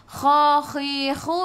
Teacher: biar ada angin, biar menggelegak